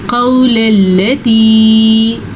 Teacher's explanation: قول اللتی، اچھا دیکھیں یہ واو ساکن سے پہلے زبر ہے تو یہ واو لین ہے۔ جب کبھی واو ساکن سے پہلے زبر ہو تو وہ واو لین کہلاتا ہے، ٹھیک ہے، اور اس کو نرمی سے پڑھتے ہیں، کھینچ کے نہیں پڑھتے